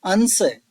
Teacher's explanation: अनुस्वार के बाद स ताल स है।